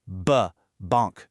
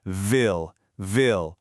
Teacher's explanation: Ville uses your top teeth lightly resting on your bottom lip. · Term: soft V